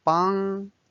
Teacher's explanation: bang is the first tone it's a flat tone